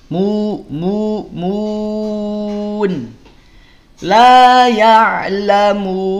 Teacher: Tapi yang dimaksud di sana adalah jangan sampai mad alid disukun yang kita bunyikan mengandung kadar sengau, kadar dengung masuk ke hidung · Baru setelah dipanjangkan ada nun sukun, barulah dia dengung, tapi jangan terlalu lama, ada kadar gunahnya.